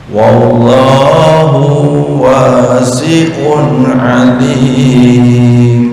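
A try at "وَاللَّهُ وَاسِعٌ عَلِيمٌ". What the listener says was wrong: Wallahu ini jangan dipanjangin ya. Wallahu wasi'un alim. Ini jangan di wallahu ini yang akhir langsung nyambung ke huruf berikutnya. Wallahu wasi'un alim. wasi'un. Ya, panjang pendek perlu latihan ya.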